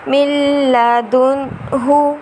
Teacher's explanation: نون ساکن کے بعد حروف یرملون کا لام آ رہا ہے را اور لام میں بغیر غنے کے اور باقی 4 حرف میں غنے کے ساتھ۔ تو یہاں نون ساکن کے بعد حرف یرملون کا لام آ رہا ہے، اس لیے یہاں پر غنہ نہیں ہوگا۔